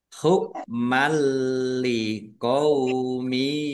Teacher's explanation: Masuk dengan tidak mendengung. Langsung masuk ke huruf lam ditandai lamnya ada tasdidnya tetapi tidak mendengung. Lamnya dibaca dobel. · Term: idgham bila ghunah